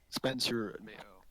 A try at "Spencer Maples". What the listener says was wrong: You said Spencer Mayo. I can tell you can say Spencer Maples, but you went Spencer Mayo.